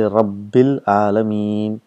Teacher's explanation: you got Hamzatul Wasl and the lam, so both are made silent